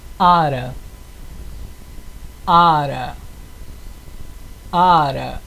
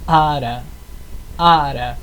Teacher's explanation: você dá uma leve né cortada de ar na garganta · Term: oclusiva glotal